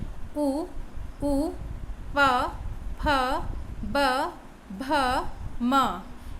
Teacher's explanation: उच्चारण स्थान इनका ओष्ठ है और इनको कहते हैं ओष्ठ्य